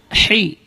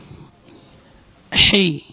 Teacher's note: Ha keluar dari tengah-tengah tenggorokan. Hi. Ya, min wasatil halq, dari tengah-tengah tenggorokan.